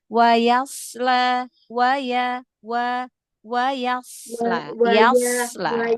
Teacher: Karena kalau enggak nanti dia jadi ee berubah huruf sin kalau tidak ditunaikan sifat istilanya ya diangkat pangkal lidahnya suaranya naikkan ke langit-langit mulut